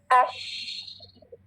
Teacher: कैसे पैदा हो जाती है ये आपको पता है, कैसे पैदा हो जाती है? ये जबान का दरमियानी हिस्सा सख्त तालु से लगता नहीं है, ठीक है, चिपकता नहीं है, बल्कि उसके करीब हो जाता है, बिल्कुल करीब, और बीच में एक गैप सा बन रह जाता है। ये गैप के अंदर हवा और आवाज फैल जाती है, जिसकी वजह से शावरिंग साउंड पैदा हो जाती है शीन में।